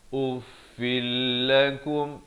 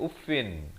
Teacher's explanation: Jadi di sini idgham bila gunnah, tanwin bertemu lam.